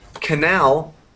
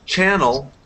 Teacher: Canal, the stress is on the last A, and in channel, it's on the first syllable, on the first A.